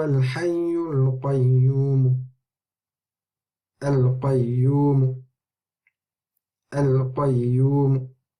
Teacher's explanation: So we can see that there's a slight dhamma sound at the end. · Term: rawm